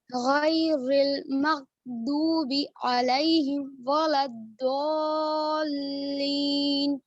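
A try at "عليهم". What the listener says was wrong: علیہم، آ میں نا آپ کا جبڑا تھوڑا زیادہ کھل گیا. نارمل اور زبان پیچھے. علیہم. جبڑا زیادہ بھی کھول دیتے نا پھر آ ہو جاتے ہیں.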